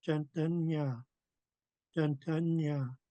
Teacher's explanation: when you do the NG blend, um, your tongue is touching the roof of your mouth and you could feel a slight reverberation. Mm, and it's so nasal that some air comes out your nose.